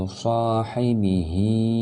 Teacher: Hai pendek, ba pendek, dan hi-nya panjang karena dia diwakili oleh tanda berdiri seperti ini yang mengisyaratkan bahwa ada alif yang tersembunyi, atau kalau kasrah dia ada ya yang tersembunyi yang tidak dituliskan di situ.